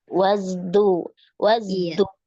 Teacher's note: Wazdujir dal tetap di gusi.